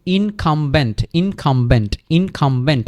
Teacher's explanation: এই যে ইউটা আয়ের মতো উচ্চারিত হয়েছে